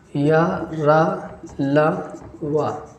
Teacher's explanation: या का तालु है ना, रा का मूर्धा है और ला का दंत है और इसका जो है दंतोष्ठ है। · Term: अंतस्थ व्यंजन